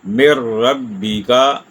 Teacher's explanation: ہم نے ڈائریکٹ میم کو را سے ملا دیا، اور یہاں رکنا بھی نہیں ہے، مر ربی کا۔ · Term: ادغام